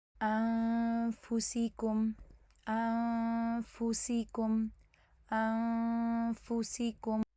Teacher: دوسری لائن میں پہلی مثال دیکھیں، یہاں پہ نون سکون کے بعد فا آ رہی ہے، تو اس کا مطلب یہ ہوا کہ اب آپ اپنے اوپر والے دانتوں کو نیچے والے ہونٹ پہ رکھیں گے جس ٹائم پہ آپ اخفاء ادا کر رہے ہوں گے. اور فا چونکہ مرقق لیٹر ہے، لائٹ لیٹر ہے، تو اس لیے اخفاء بھی ہماری لائٹ ہی ہوگی. اور پھر جیسے ہی آپ کا غنہ اوور ہو جائے گا تو ساتھ ہی آپ اس کو پھر پریس کر کے فا کو ادا کر دیں گے نارمل طریقے سے جس طرح ہم پریس کرتے ہیں فا کی ادائیگی کے لیے.